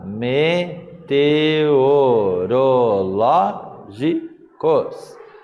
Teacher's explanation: a sílaba tônica, a sílaba mais forte, a que recebeu acento gráfico, é a antepenúltima sílaba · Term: proparoxítona